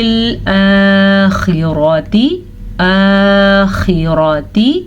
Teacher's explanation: خا کو بھی پر پڑھنا ہے اور را کو بھی پر پڑھنا ہے